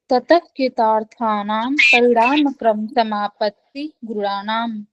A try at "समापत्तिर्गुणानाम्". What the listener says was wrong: समापत्तिर, र भी लगेगा। यस, गुणानाम।